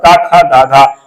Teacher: का खा ग सब कंठ से उच्चारित होते हैं